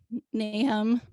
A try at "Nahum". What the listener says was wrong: No, that's pronounced Nahum. That middle consonant is one that doesn't exist in English, so many English speakers, but it's Nahum.